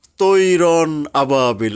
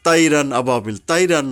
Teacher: এই ইস্তেলার হরফ হলো মোটা করে পড়তে হবে এবং বাংলায় আকার উচ্চারিত হবে না · যেমন তৈর আবাবিল অনেকে বলি না তাইরান আবাবিল তাইরান নয় এখানে তৈহ অক্ষরটা আমাদের মোটা করতে হবে এবং মোটা করার উদ্দেশ্যেই আকার উচ্চারণ করা হয় না তাহলে হালকা হয়ে যায় এরকমের যে খ ত জ গইন কফ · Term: ইস্তিওয়ালার হুরুফ